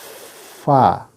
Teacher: Huruf fa tempat keluarnya adalah bibir bawah bagian dalam bertemu dengan gigi depan atas. Jadi bibir bawah sini dalam, ya, ketemu gigi.